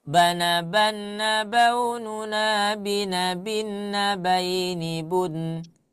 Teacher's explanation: 2 harokat guna atau setara dengan 3 ketukan. Jadi jangan terlalu cepat.